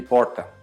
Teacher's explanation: No Veneto também a gente tem um R retroflexo, como aqui no Brasil